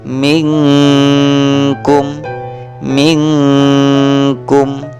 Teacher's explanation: Setelah nun mati bertemu dengan huruf ikhfa berupa huruf kaf, maka nun matinya harus disamarkan. Harus dibaca samar-samar. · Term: bacaan ikhfa